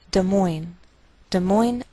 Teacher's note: Note that we treat the name of this capital like one word, and the greater stress is on the second part